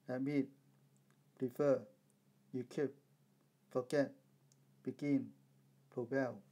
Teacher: the stress is on the last syllable